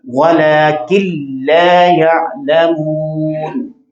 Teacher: تو لام اور را یرملون میں سے جب نون ساکن یا تنوین کے بعد آتے ہیں تو وہاں پر مکمل طور پر ادغام ہوتا ہے اور نون ضم ہو جاتا ہے، مکمل طور پر غنہ نہیں ہوتا